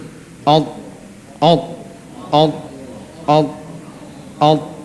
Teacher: ujung lidahnya nempel ke pangkal gigi seri atas sehingga suaranya di sini dia terkumpul. Alt, alt, alt, alt, alt, enggak keluar. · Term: huruf ta